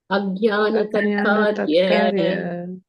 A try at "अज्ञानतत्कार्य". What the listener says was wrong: It's one word.